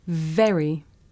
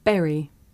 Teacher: look at the difference watch my lips and teeth very berry when I say very my teeth are touching my lip very when I say Barry my lips are tight together